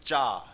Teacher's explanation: जब भी चा बोलोगे तो हवा भी निकलने की कोशिश करेगी, हवा संघर्ष करेगी किसके साथ? जीव्या के साथ। लेकिन जीव्या टच कर जाएगी तालू में, बिल्कुल चा चपक के जीव्या कहाँ जाती है? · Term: स्पर्श संघर्षी